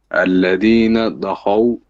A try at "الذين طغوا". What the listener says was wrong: Your ta is a problem. No, you're saying da, dal or dad. It's ta. Like ta but ta heavy.